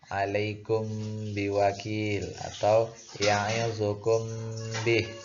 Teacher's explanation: Ya, dia dibaca dengung ya, atau ikhfa samar-samar disertai dengan dengung. Jadi huruf mimnya melebur kepada huruf ba. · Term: ikhfa syafawi